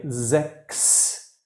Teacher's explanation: the CHS in many words, if it's at the end or if it's part of a syllable, it's always like an KS, like six. Six is ks.